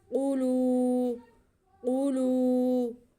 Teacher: क़ाफ हरूफ़ मुस्तअलिया में से इसे मोटा पढ़ेंगे, ऊपर पेश है।